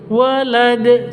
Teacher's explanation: Makanya kalau mati berlaku hukum bacaan qalqalah. Karena ada di akhir, maka qalqalah kubro.